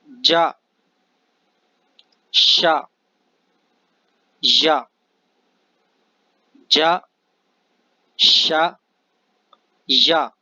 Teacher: اس کے بعد آگے یہ 3 حروف ہیں، یہ زبان کے درمیان سے، بیچ زبان سے یہ ادا کیے جائیں گے